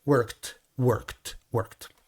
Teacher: si son consonantes no Sonoras como la k work work work que no suenan suena un sonido de T